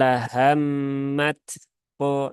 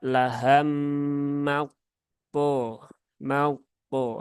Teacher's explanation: Maka bedakan ya antara mat po dengan mau po. Nah, yang pertama tadi masih ada taknya. Nah, yang kedua sudah menghilang.